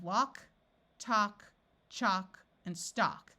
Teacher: In all these words, the A has its broad sound of ah, and the L is silent. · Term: silent L